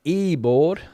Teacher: Spanish uh pronounced the v as a b